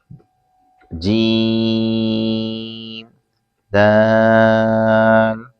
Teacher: جیم زبان کے درمیان تالو کے درمیان سے ادا ہوتا ہے اور دال زبان کی نوک اوپر کے دانتوں کی جڑ سے ادا ہوتا ہے